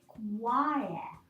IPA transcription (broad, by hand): aɪə